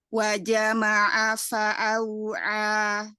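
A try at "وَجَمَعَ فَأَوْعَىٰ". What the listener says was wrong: Ya, jaharkan lagi jimnya. Ini di mana makrosnya? Tengah lidah ya? Ketemu yang langit tengah. Nah, kadang-kadang kita persepsi kita tuh di tengah gitu. Jadi nah maju dikit.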